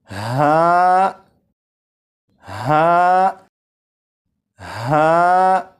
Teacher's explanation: ہا حلق کے نیچے والے حصے سے ادا ہوتا ہے، اور جب اسے پڑھیں گے تو آواز ذرا بھاری ہو